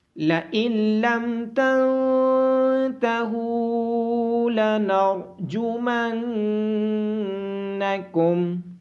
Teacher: نون ساکن کے بعد حروف یرملون میں سے لام ہونے کی وجہ سے یہاں پہ ادغام ہوگا۔ نون ساکن کے بعد حروف اخفا میں سے تا ہونے کی وجہ سے یہاں پہ اخفا ہوگا، اور ہا کے بعد واو مدہ ہونے کی وجہ سے ہا کو لمبا کیا جائے گا۔ · ہا کے بعد واو مدہ ہونے کی وجہ سے ہا کو لمبا کیا جائے گا۔ را کو موٹی آواز کے ساتھ پڑھا جائے گا، اور نون مشدد ہونے کی وجہ سے اس پہ غنہ ہوگا۔